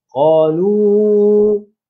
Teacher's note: Q panjang dua harakat, kemudiannya lu itu antara 4 hingga 5 harakat.